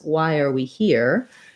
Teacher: a question word like who what when we are or why we often don't have a rise because the word order tells us it's a question